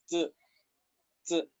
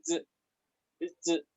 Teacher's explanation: Estas palabras son en inglés y se expulsa un poquito de aire al decirla, pero vamos a tratar de no expulsar tanta aire al hacer el sonido de la Z. Este sonido es como vibrante. Si quieren, se colocan en su casa la mano acá en el cuello y tienen que sentir un poco de vibración al decirla. De manera que suene ya como z, z. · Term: sonido vibrante